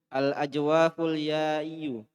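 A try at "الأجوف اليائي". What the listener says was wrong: Pendek wawnya ini, pendek wawnya.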